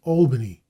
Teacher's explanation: Americans always use the broad A in the first syllable of Albany, whereas Englishmen rhyme the syllable with pal.